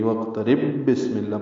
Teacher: اگر آگے بسملہ ملانا ہو تو با ہے، بسملہ کی با ہے، تو وقترب کی با کو بسملہ کی با سے ملائیں گے تو ادغام ہو جائے گا، ادغام مثلین ہوگا، یعنی وقترب بسم اللہ پڑھنا ہوگا.